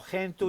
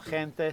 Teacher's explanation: C e G in alcune varietà di sardo, come in latino, sono dure o suono occlusivo velare